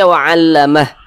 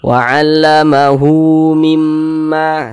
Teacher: Tapi kalau misalkan kita tidak berhenti di mad silah qasirah, baru hurufnya itu dibaca panjang. Ini kita tidak berhenti di huruf H. Huruf H-nya kita baca panjang.